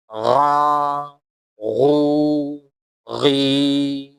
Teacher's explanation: حلق کے اوپر والے حصے سے نکلے گا